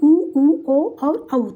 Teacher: ऐसे स्वर जिनका उच्चारण करते समय या बोलते समय जो होठ का आकार होता है वो पूरा क्या हो जाता है? गोल हो जाता है, तो उसे क्या कहते हैं? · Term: वृत्ताकार स्वर